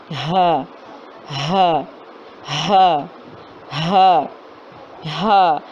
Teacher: ہا اس کا مخرج ہے حلق کے آخری سینے کے طرف والے حصے یعنی کہ اقصی حلق سے ادا ہوتا ہے.